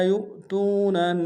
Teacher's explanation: حمزہ بشکل واو ہے، جھٹکا دیں گے، واو مدہ ہے تو میں، واو مدہ ایک لام کھینچیں گے۔